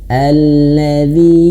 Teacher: panjang panjang sampai empat atau lima harakat ya